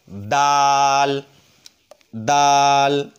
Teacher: হা খ এরপর আসুন দাল দাল দালটাও একই জায়গা থেকে অর্থাৎ জিহ্বার আগা ওপরের দুই দাঁতের ঘোড়ার সঙ্গে লেখে দাল